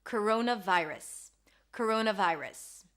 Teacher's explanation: We have a schwa here, if you can hear, vi, I as in my, and then rus. Round your lips for the R, a schwa sound, and an S.